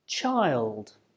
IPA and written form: tʆaɪld (child)